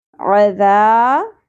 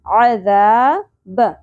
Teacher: ذال کے ساتھ زبر اور الف حرف مدہ ایک الف کے برابر کھینچیں گے، نرمی سے ادا کریں گے ذال کو. عذاب، زبر کو بھی زیادہ نہیں کھینچیں گے.